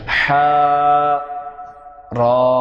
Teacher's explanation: حا را یہ دونوں بھی 1 حرفی حروف ہیں، ان کو 1 الف کے برابر کھینچ کر پڑھا جائے گا